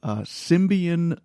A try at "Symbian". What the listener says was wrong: Symbian. Why are you putting an M in there? Symbian. Symbian.